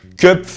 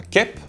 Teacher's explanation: Le ö court /œ/ équivaut à un e /ɛ/ en yiddish. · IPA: /ˈkɛp/